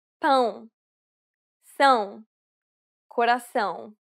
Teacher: It is similar to the ow sound in English, but with nasality.